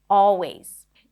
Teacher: you don't have to pronounce the L sound if it's tricky for you. Always, just an open ah sound.